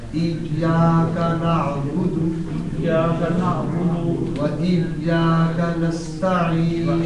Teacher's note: یہاں جو نعبد ہے یہ دال پر صرف پیش ہے، یہ واو اس کے ساتھ الگ ہے. نعبد لمبا نہیں ہوتا، یہ احتیاط ہے کہ نعبدو نہ بن جائے